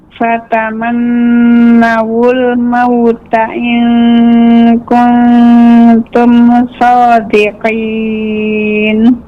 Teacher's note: nun yang bertasydid dipanjangkan gunnahnya ibu, ditahan terlebih dahulu.